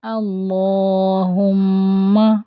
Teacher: اللہم، میم پر تشدید ہے، اور جب میم پر تشدید آتی ہے تو میم کا غنہ ہوتا ہے۔ 2 حرکت کے لیے آواز کو ناک میں لے کر جاتے ہیں